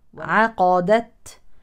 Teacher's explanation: العين مرققه لا نقول عقدت ليست عاقه ولكن عقا عقا عقدت التاء ساكنه اذا فيها الهمس وصلا او وقفا